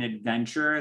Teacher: in adventure, the sound of the T is actually a ch sound